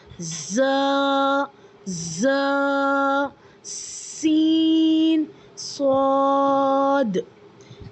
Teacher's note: ज़बान जो है ना आपकी नीचे वाले टीथ से टकराएगी, तब जाकर ये 3 लेटर्स अदा होंगे · सीटी वाली आवाज़ पाई जाती है, जैसे कोई चीज़ हम स्क्वीजिंग कर रहे हो